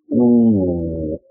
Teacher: U adalah vokal tinggi tapi bulat posisi bibir kita